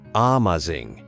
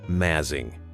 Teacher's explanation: That first ah just becomes a tiny uh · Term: uh sound